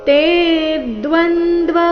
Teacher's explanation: ತೆ ದೀರ್ಘ ಹೇಳಿ ನಂತರ ಆಘಾತ ಮುಂದೆ ದ್ವ ಸಂಯುಕ್ತ ಅಕ್ಷರ ಬಂದಿದೆ